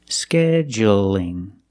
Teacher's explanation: It's light because the L is between vowels.